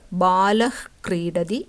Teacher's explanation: വിസർഗം നാക്കിൻ്റെ തുടക്കം, അതായത് root of the tongue ഉപയോഗിച്ച് ഉച്ചരിക്കണം. ഇതിന് ഒരു ഹാ ശബ്ദത്തിന് പകരം വായു ഇങ്ങനെ പകുതി പുറത്തു വിടുന്നത് പോലെയാണ് ഉച്ചരിക്കുക. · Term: ജിഹ്വാമൂലിയം